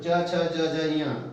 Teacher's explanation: इसके बाद दूसरा प्रश्न आता है कि च वर्ग च छ ज झ ञ, च वर्ग का उच्चारण स्थान तालु